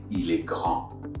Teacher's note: I don't have any vowel behind the final D of grand. So I'm going to ignore that D.